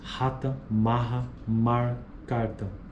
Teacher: Fricativa glotal desvozeada, o símbolo seria o equivalente à letra H